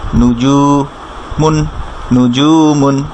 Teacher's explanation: নু জু উ সাইন দেয়া, এর বামে ওয়াও সাকিন থাকার কারণে এক আলিফ মাদ করতে হবে জু